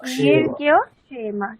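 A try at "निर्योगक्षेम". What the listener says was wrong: না মাঝখানে গকার আছে, নির্যোগ।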